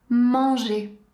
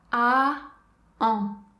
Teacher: la bouche prend la même forme que pour prononcer le son A et ensuite le son devient nasal. Encore une fois on garde bien la langue à plat dans le fond de la bouche. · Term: son AN